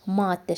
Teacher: Maddə sözü var ki, birinci a uzanır. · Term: uzanma